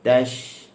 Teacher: Huruf shin dia keluar daripada wastul lisan ma'a ma yuhadhi min hanakil a'la, bertepatan dengan langit atas. Kita kena ingat dia bersifat dengan rakhawah. Okay, dia mengalir, dia ada tafashi sekali lah. tash. Okey, kita jangan baca tashhadun panjang lebih, tak boleh.